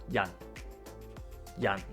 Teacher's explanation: To correctly pronounce the J onset, we first raise the front of the tongue towards the front of the mouth without actually touching it, creating a narrow space for air to pass through